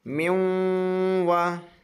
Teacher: من وا نہیں بولنا ہے، نون سائلنٹ ہو جائے گا